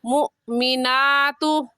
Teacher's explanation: کھڑی زبر کو ایک الف کی مقدار کھینچ کر پڑھیں گے.